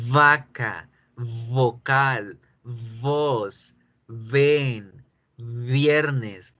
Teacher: y ahora la uve la vibración en la garganta